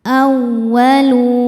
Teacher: Waw tasydid yang tidak didahului tanwin atau nun sukun maka cukup dibaca dengan naber. Naikkan intonasi suara kita tanpa menahannya.